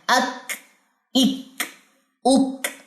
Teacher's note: जजम देंगे जजम देने के बाद मख ज्यादा क्लियर होता है जब काफ के ऊपर जजम आ जाए बारीक वाले काफ के ऊपर तो उसमें हमस पाया जाता है